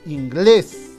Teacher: la mayor fuerza de voz está en la última sílaba